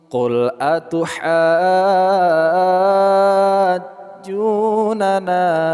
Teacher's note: ha panjang dulu 6 harokat, baru setelahnya kita tasydidkan huruf jim, mad lazim musaqqal qalimi.